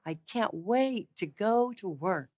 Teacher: I don't emphasize the consonants in that particular approach. I'm emphasizing the roundness of the vowels.